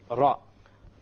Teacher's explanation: you use the tip of the tongue and you place it close to the gums of the upper teeth, and from this one letter comes, and that is the letter Ra.